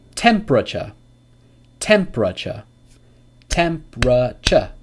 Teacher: So guys, so remember that these silent syllable always takes the shua, and sometimes it can be pronounced if you're speaking slower, but oftentimes when you're speaking quickly, you'll hear this without the shua sound, so it becomes a silent syllable